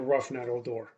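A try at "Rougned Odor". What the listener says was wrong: Horrible pronunciation, but yeah, good time at the game. I think it's Rouge Ned or Rouge Ned, something like it. It's not Rough Ned. Like it's not.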